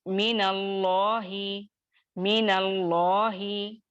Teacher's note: ये मिन के साकिन को, नूने साकिन को हरकत दे दी गई